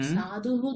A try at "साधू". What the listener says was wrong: সাধু নয়, সাধু, বিসর্গ নেই ওখানে,